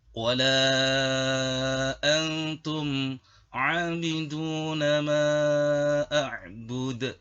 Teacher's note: Pada bacaan wala antum ada hukum bacaan mad jaiz munfasil dengan panjang bacaan 5 ketuk.